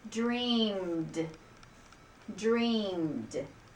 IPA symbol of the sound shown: d